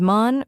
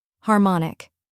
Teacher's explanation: mon, which rhymes with gone and is the stressed syllable. Finally, ik, which sounds like ick in sick.